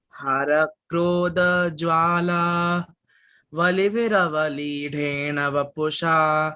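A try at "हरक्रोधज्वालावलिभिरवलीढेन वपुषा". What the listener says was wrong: Here we do not pause like that. sorry to interrupt. We do not pause there.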